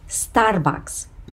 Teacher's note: The stress falls on the first A